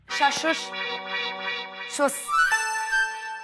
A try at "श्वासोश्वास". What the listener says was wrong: क्या भाभी? नहीं भाभी, शाशा कुछ नहीं, श्वासोश्वास।